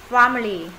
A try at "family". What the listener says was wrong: Nó không phải là A dài. Nửa A nửa E.